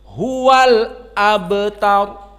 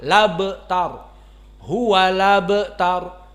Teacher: Diistilahkan qiraah Wars dengan an-naql. Maknanya dihapuskan hamzah dan harokat hamzah pindah kepada yang sebelumnya yakni lam. Maka bukan huwal abtar tetapi huwa labtar.